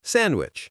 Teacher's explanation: Most native speakers do not say the D in sandwich. They say sandwich.